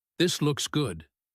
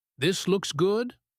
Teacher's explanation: You do not want to just take it, so you point to it and say, "This looks good." If you say it with a falling voice at the end, good, it is just a statement. You are not asking for anything.